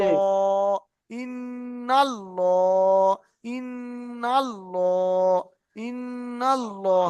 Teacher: যেখানে নুনের উপর তাসদিদ জি আছে তাহলে গুণনা করে পড়তে হবে